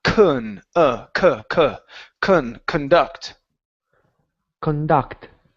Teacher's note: And last one here is instead of conduct, it's conduct. So the stress is on the end of the word. So the C-O-N here at the very beginning, instead of saying con or con, it's conduct.